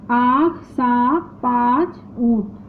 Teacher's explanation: इस ध्वनि का उच्चारण मुख तथा नाक की सहायता से होता है, इसलिए इसे अनुनासिक भी कहते हैं।